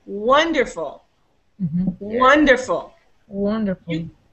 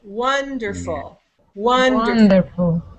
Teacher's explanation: you hear that the first there were three syllables wonderful and you can hear that the first one is higher longer and louder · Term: syllable stress